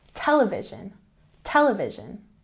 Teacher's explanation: television has the emphasis on the first syllable.